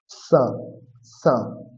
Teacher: দন্তস দাঁত থেকে উচ্চারণ হবে